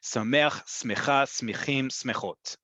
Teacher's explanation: The default is always the last syllable in modern Hebrew.